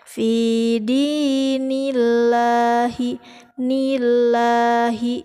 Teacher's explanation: Tadi sudah dikatakan kalau lam jalalah harkat sebelumnya itu fathah atau dhammah dibaca taghlid atau tafkhim. Nah, apabila lam jalalah harkat sebelumnya itu kasrah maka dibaca tarkik atau tipis